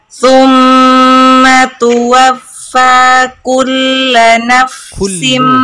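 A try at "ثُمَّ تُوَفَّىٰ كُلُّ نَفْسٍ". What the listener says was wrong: Bukan kulla, tapi kullu. Mulai konsisten huruf tebalnya, terus ditingkatkan, tapi huruf ra-nya kurang tebal.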